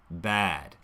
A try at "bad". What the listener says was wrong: There, it's kind of a flat pitch. And since this is bad, this is a stressed syllable. It's a content word.